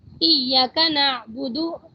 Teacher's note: ہم نے یا کو چھوٹا کر دیا، الف کو ہم نے ختم کر دیا بیچ میں سے، یہ بھی بہت بڑی لہن جلی ہو گئی ہے، واضح غلطی ہے، سب کو نظر آ رہا ہے کہ الف تھا اور ہم نے نہیں پڑھا۔